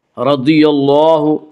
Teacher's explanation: را کے اوپر زبر سے را کو پر پڑھیں گے